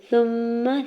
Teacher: سا کی پیش کو میم مشدد کے ساتھ ملاتے ہوئے میم مشدد پہ غنہ کرنا ہے